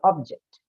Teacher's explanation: if it's meant to be used as a noun, then as per the rule, the stress then moves towards the first syllable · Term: functional stress